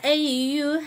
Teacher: Eyy harfinde elif uzatmasından dolayı bir elif miktarı uzatıyoruz.